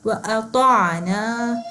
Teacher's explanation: ہم نے حمزہ کی آواز سے تھوڑا ہم نے مختلف پڑھنی ہے آئین کو اپنے حلق کے درمیان میں سے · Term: آئین کی آواز